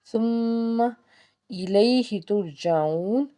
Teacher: یا سے پیچھے زبر، تو اس کا مطلب ہے یالین کا قاعدہ ہے، معروف طریقے سے نرمی سے اس کو ادا کر لیں